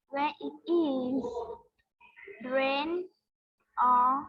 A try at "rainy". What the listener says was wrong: no, it's not rain. It's not rain. No, that's not rain. Rainy. You have to read properly to the end. Don't be lazy. When it is rainy, you are saying when it rain.